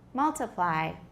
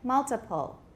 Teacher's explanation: does it sound like we have a stressed syllable, an unstressed syllable, and then another syllable that's not quite unstressed?